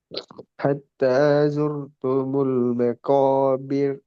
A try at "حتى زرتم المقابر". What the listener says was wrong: ஜுர் துமுல் அந்த ராம் மாறணும். இப்ப இந்த ராம் கணிக்க சாதாரண சோர் ஜோர் ரா வல்லினத்தை பேத்திரும். حتى زرتم المقابر.